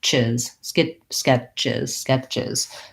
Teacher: So lax and short on that I sound, and then voiced.